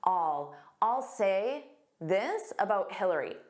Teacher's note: Native speakers will commonly form a contraction and say, I'll.